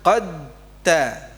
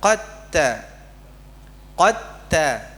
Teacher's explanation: Dibaca dengan idgham. Nggih. Jadi idghamnya kamil bukan naqis.